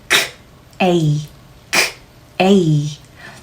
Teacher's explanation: 여러분이 생각하시는 거보다 훨씬 강한 호흡을 넣어서 크 케이 사운드 자체가 날카롭다는 느낌을 느껴 보셔야 합니다.